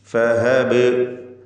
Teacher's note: ആഖിറൻ ഫഹബലി, ഫഹബ്, ഈ പദത്തിൽ ബാഇന് സുക്കൂൻ വരുന്നുണ്ട്. ഖൽഖല സുഗ്റ നൽകി ബാഇൻ്റെ സുക്കൂനിനെ ഹറക്കത്ത് പോലെ വ്യക്തമാക്കി